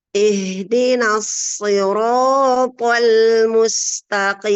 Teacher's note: Maksudnya kita sebutkan H tapi seperti kita menghembuskan nafas keluar ya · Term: hams